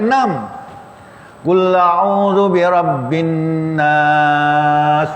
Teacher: Nas tu ada 3 sifat. Betapa nas 2 harakat, yang kedua 4 harakat, ketiga 6 harakat. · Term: 3 wajah